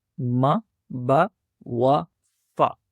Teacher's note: ये चारों हुरूफ होठों से अदा होने वाले हरूफ हैं।